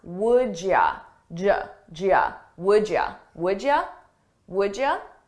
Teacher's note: You becomes ya, and I combine those sounds.